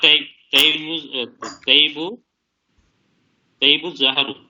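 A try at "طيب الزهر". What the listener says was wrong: अच्छा, वो तैब नहीं होता, वो तीब होता है, तीब, ता के नीचे जेर है.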